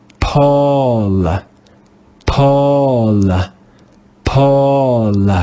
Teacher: the digraph AU is pronounced with the rounded A sound